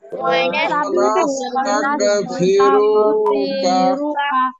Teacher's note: ওয়া দুই ঠোঁট গোল হবে